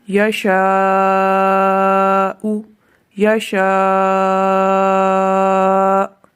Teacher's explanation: یہاں حمزہ کی وجہ سے مد متصل ہے جو دونوں حروف میں پائی جا رہی ہے، وقف کے بغیر بھی اور وقف کے ساتھ بھی۔